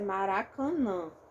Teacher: vai acontecer aqui e no meu caso a minha pronúncia Maracanã Então eu tenho a nasalização dos dois últimos · Então, eu tenho a nasalização dos dois últimos A's. Tem gente que fala Maracanã.